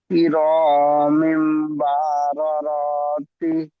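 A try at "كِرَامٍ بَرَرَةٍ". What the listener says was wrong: জি, এই বারা রতি টান হয়ে যাচ্ছে, টান হবে না, সবটা হারাকাত, পুরোটাই হারাকাত আছে। তাহলে কি হবে? কিরমিম বারারা।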